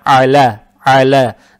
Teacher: Фатху произносим через гортань, то есть «а», «а». Далее стоит буква «лам» с фатхой. Фатха приобретает оттенок «я»